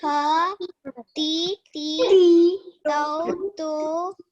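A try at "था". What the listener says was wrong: But make sure you are saying tha and not ta. Okay? Yeah, there is her sound here. Okay, there is a difference.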